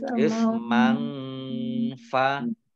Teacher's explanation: Fathah tanwin bertemu dengan huruf fa, bacaan ikhfa dibaca samar-samar.